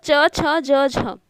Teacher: स्पर्श होने में थोड़ा संघर्ष करना होता है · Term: स्पर्श संघर्षी